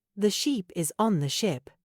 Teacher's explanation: really focus on making the I in ship short and the E in sheep long.